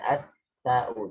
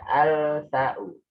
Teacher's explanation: Berarti semuanya itu alnya hilang, lamnya hilang.